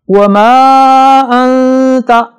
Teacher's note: انت نون ساکن کے بعد تا آ رہا ہے یہاں غنہ ہوگا